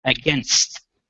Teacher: you're adding an extra vowel between the N and the S